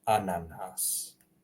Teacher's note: be longer or can be shorter ananas so a na Nas notice the shorter vowels and the longer one